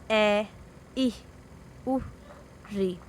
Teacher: जिन स्वरों के उच्चारण में कम प्राणवायु की आवश्यकता होती है या कम समय लगता है ह्रस्व स्वर कहलाते हैं।